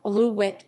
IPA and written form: aloo-wɛt (Alouette)